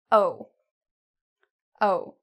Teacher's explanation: It's actually kind of in the middle. It's not ooh, it's not very, very tiny, but it's also not ah, very big.